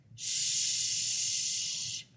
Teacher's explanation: the fricatives or air flow sounds so you can have them flow indefinitely